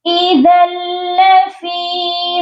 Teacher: ذال کو لام مشدد کے ساتھ ملائیں گے تو غنہ نہیں ہوگا کیونکہ آگے حرف جر نون کا لام آ گیا ہے.